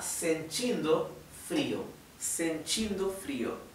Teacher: Recuerden que la t con la i se pronuncia ch chi en vez de ti